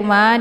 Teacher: Ma dibaca panjang ada Alif sebelumnya harakat fathah